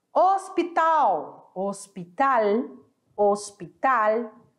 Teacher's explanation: O A aberto e o L com som de L.